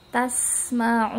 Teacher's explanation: Setelah monyongkan, tarik mulut kita, tasma'un ya, jangan sampai langsung dilepas tasma'un gitu aja, tapi harus berasa nunnya itu ada gunnah di akhirnya